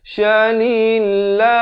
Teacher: lafz jalalah dibacakan nipis 2 harakat